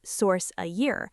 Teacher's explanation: The F in of completely vanishes.